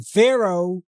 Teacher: we pronounce it oh at the end, but it's written with a heh